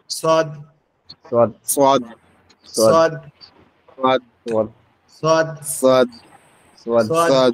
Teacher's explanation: সোয়াদ অক্ষরটা আমাদের জিহ্বার আগা, নিচের দাঁতের সঙ্গে লাগবে।